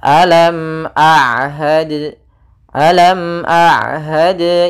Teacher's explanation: syidah itu tertahannya suara rakhawah itu mengalirnya suara kita akan tetapi Ain di antara keduanya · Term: sifat bainiah